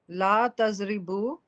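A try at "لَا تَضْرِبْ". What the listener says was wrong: बू नहीं, जज़म आना जरूरी है। ला तजरिब,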